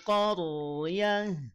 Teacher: rnya dibaca tebal ya rnya dibaca tafkhim mufakhamah